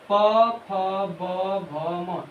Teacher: इसका उष्ट से उच्चारण होता है।